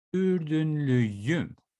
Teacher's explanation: I have a conjugation with ü, which is one of the most annoying vowels in Turkish, because it looks like you are kissing the air, basically.